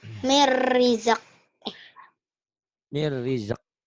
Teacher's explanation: kolkolahnya hilang ya, enggak ada kolkolah